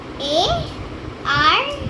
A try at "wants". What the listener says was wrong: It's not R. WA.